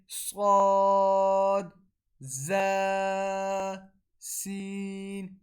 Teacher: صاد زا اور سین کو ادا کرنے کا طریقہ یہ ہے جب ہماری زبان کی نوک ہمارے نچلے والے جو منہ میں سامنے والے دو دانت ہوتے ہیں ان کی جڑ سے جا کے لگے تو صاد زا سین ادا ہوتے ہیں